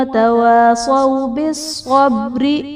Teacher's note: بالصبر میں صاد حرف مستعلیہ ہے، پر پڑھا جائے گا، اور با حرف قلقلہ ساکن ہے تو یہاں پر قلقلہ خوب ظاہر کریں گے، اور را کے نیچے زیر ہے تو را کو ہم باریک پڑھیں گے